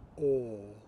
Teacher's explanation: pronounced with the AH vowel but round your lips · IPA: [ɔː]